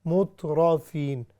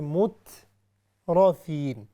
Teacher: را جو ہے اس کو صرف ہیوی کرنا ہے، باقی الفاظ کو نہیں